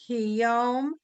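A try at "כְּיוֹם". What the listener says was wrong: Kiyom, not ki. Kiyom.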